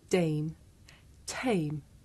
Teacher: In English, we say the sound at the beginning of the word tame with a big puff of air. Look. Dame, tame.